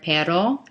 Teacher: An R in Spanish is almost more of like an English D, like in the word perro. It's more of an alveolar frontal sound, where the English R is in the back.